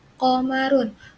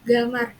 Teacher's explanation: sebagian atau rata-rata mereka menyebut huruf Qaf itu sebagai G. Kayak contohnya Qamarun.